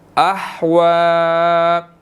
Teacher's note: ہا جو ہے حروف حلقی میں سے ہے, اس کو ہم نے حلق سے ادا کرنا ہے